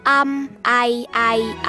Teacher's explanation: เป็นรูปสระที่มีเสียงพยัญชนะรวมอยู่ด้วยเสียงมยว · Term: สระเกิน